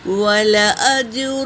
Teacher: جیم پر سکون ہے تو یہ خلخلہ بھی ہے، اور سکون والے حرف کو پہلے والے حرف سے ملا کر پڑھیں گے۔